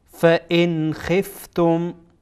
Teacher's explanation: لله قانتین فإن خفتم، فإن نون ساکن بعدش خا آمده، خا از حروف اظهار، نون ساکن اظهار میشه